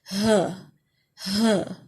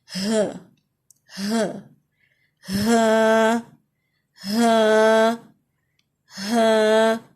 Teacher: Throat کا جو سب سے نیچے حصہ ہوتا ہے, درمیانی حصے سے بھی نیچے جو حصہ ہوتا ہے وہاں سے یہ ادا ہوتا ہے. بیک آف دا تھروٹ اس کو کہہ سکتے ہیں.